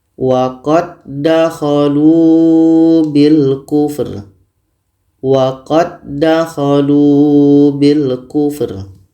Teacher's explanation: Karena bertemu dua huruf yang sama, maka dal ini sudah sempurna masuknya kepada dal yang kedua. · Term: idgham mutamatsilin